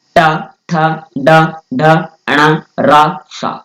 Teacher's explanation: मूर्धन्य वर्ण की बात करते हैं कि जिस जिस वर्णों के उच्चारण में हमारी जीवा जो है वो मुड़ती है, तो टवर्ग बोलते समय हमारी जीवा मुड़ जाती है